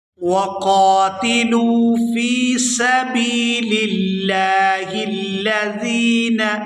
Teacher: وَقَاتِلُوا فِي سَبِيلِ اللَّهِ الَّذِينَ، یہاں با کے بعد یا ساکن ہے اور یا مدہ ہے، یہاں با کو یا ساکن کے ساتھ ملائیں گے تو کھینچ کر ادا کریں گے